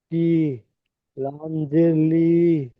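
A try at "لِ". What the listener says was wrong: লামসের লি টান হবে না, যে জাবার জের পেশ টান হয় না।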